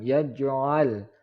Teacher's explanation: jim yaj adalah huruf qalqalah, salah satu dari huruf qalqalah, maka dipantulkan